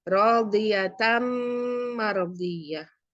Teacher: Ini rodiyatan ketemu dengan mim mardiyah. Jadi ini nunnya ini masuk ke mim. Bacanya rodiyatam mardiyah. Jadi mim, bukan nun lagi. Dimasukkan dan mendengung. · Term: idgham bigunnah